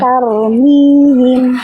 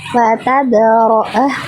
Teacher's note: ra sukun itu harus dibaca tebal